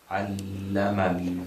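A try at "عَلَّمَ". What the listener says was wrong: Excellent. This goes away, and this is connected. Ma is connected with lam.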